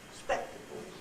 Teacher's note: the nuclear syllable itself is high and everything after it is low and level